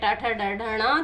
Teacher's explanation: हमारी जीभ ऐसे मोड़ करके ऊपर को पीछे की ओर टच कर रही है, इसलिए इसका नाम रखा गया है मूर्धन्य व्यंजन